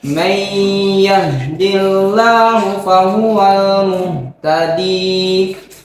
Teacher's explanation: Ya, yang didengung adalah may, didengungkan ya. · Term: idgham bigunnah